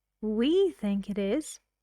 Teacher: she puts emphasis on the word we she means she and Bill think that film is interesting we